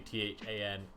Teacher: The double D voiced th sound in Welsh is a little strange for English speakers.